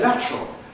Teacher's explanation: the [tr], the affricate, there that results from loss of the schwa /ə/ through compression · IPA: [ˈlætrəl]